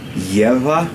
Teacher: So I palatalize that G, so it's a yes sound